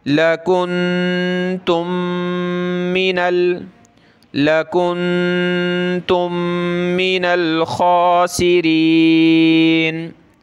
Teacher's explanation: यहाँ नून पे नाक में आवाज़ पैदा करेंगे और मीम दोनों आपस में मिल जाएंगी। यहाँ एक मीम पड़ी जाएगी जैसे कि यहाँ पर, और नाक में आवाज़ पैदा की जाएगी।